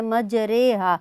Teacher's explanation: آپ زبر کو زیر کی جانب مائل کر کے آپ پڑھتے ہیں تو اس کو کہتے ہیں مائل کرنا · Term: امالہ